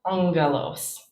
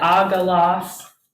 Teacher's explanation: when gamma is doubled, the first one becomes nasal, and it makes an ng sound. So we get angelos.